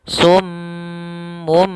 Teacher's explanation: ketika kita matikan mimnya karena bertemu dengan ba, kita tahan suara m-nya 2 harokat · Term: iklab